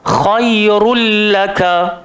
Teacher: tu akan ditulis tak ada baris lam tu ada tanda sabdu masuk terus dekat dalam lam seolah-olah Nun tu tak wujud · nun mati dan juga tanwin bertemu dengan lam bacaannya juga tidak berdengung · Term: idgham Bila Ghunnah